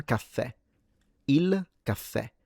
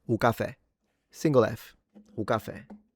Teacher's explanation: If you're in Sicily and you want to sound Sicilian, drop one of the 2 F's and don't make it long.